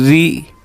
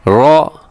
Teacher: را کے نیچے جب حرکت ہوتی ہے تو را باریک ہوتی ہے, اوپر ہو تو را موٹی پڑی جاتی ہے